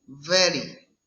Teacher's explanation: Consonant V, example very. It's labiodental fricative.